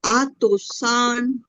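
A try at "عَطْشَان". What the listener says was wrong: টান হবে না, তিন শক্ত হবে। আতশান। শা টান হবে না আপু। আতশান, আতশান।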